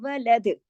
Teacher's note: باریکی سے, کیونکہ موٹے حروف نہیں ہے نا یہ. ولد ولد, دال پہ کلکلا ہلا دینا ہے, اس کو جمانا نہیں ہے , ولد ایسے نہیں کرنا, ولد ایسے ہلا دینا ہے. پھر